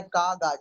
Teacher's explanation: कागा, जब काग और बोलेंगे आपको लगेगा कि जबान पीछे से उठती है और वो जो छोटा सा योबुला है उससे टकराती है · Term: वेलर